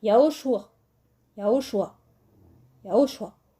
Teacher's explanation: Alors, nous avons Yé, ou Ya, Yao, Shua. Alors le Aïn final, c'est pas vraiment un A comme on peut le prononcer A, c'est un A plutôt qui sort du fond de la gorge.